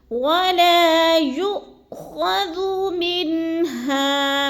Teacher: جدھر بھی حمزہ ساکنہ جس لفظ پر بھی آ جائے تو اس کو حمزہ ساکنہ کو جھٹکا دے کے پڑھتے ہیں